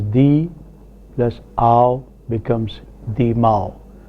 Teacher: sometimes even a consonant such as ma is inserted between vowels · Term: consonant insertion